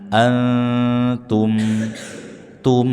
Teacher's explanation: mim sukun dibaca dengan izharus syafawi jelas di bibir. Rapatkan kedua bibir berikan ghunnaah meskipun naqisho tidak sempurna.